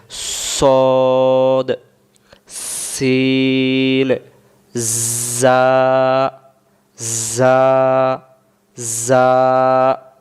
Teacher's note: যা সিন সদ অর্থাৎ এই তিনটি অক্ষর যখন বলব শীষ হবে। মানে এই ধরনের একটু শব্দ আসবে।